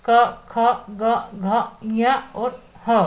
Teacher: ये आपके व्यंजन आपके कंठ से उच्चरित होते हैं।